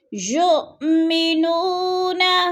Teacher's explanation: یو حمزہ ساکنہ ہے، اس کو ہم نے جھٹکا دے کے پڑھنا ہے۔